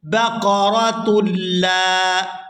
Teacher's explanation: یہاں تا کو لام مشدد کے ساتھ ملائیں گے ، تا لام دو پیش، تل لام الف زبر لا، بقرۃ